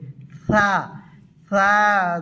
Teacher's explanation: সা উচ্চারণ হবে জিহ্বার আগা সামনের দাঁতের আগা থেকে পাতলা করে হাওয়ার মতো বার হবে।